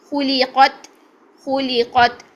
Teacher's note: قاف کو موٹا رکھا، قط نہیں کرنا ہے.